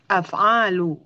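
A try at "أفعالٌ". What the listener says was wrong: Tanwin.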